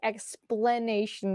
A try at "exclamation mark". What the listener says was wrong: It's not explanation, it's exclamation.